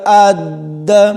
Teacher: حمزہ کو دال کے ساتھ ملائیں گے تو جھٹکا دے کر پڑھیں گے